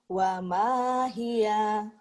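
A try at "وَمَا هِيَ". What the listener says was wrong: Pendek ujungnya. Wa mahia. Ada penekanannya ya.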